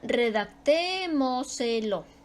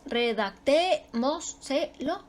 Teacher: Su sílaba tónica va antes de la antepenúltima sílaba. Es decir, antepenúltima.